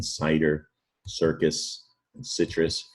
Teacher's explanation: That's going to be a soft C, making an S sound